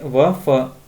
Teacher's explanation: दंतोष्ठ, निचले होठों और ऊपर के दांतों से